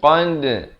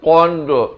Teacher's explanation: Dal bila kita lantunkan itu kita pepeskan qad, bukan qand. Itu tak betul ya. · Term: lantunan qalqalah